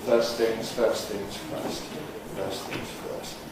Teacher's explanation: We learnt about elision, the omission of certain sounds. How in the phrase first things first, we normally omit the T in first and normally say first things first. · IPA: /ˈfɜːs θɪŋz ˈfɜːst/